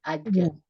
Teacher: Bukan ujung lidah, kan dia tengah huruf lidah ya. Tengah lidah bertemu langit-langit atas. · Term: jim